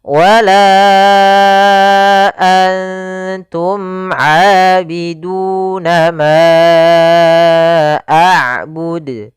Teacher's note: Pada lafal wala antum, pada lafal la kembali lagi kita dapati hukum tajwid berupa mad jaiz munfasil, yaitu ditandai dengan adanya huruf hamzah yang datang setelah huruf mad, di sini huruf alif. Maka kita panjangkan untuk huruf la sepanjang 4 harokat dan kita namakan di sini hukum tajwid mad jaiz munfasil 4 harokat.